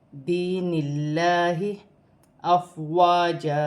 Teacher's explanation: نون اللہ کی لام سے پہلے زیر آ رہی ہے تو یہ لام باریک پڑھی جائے گی